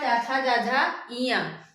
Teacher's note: ये सब तालु से होते हैं।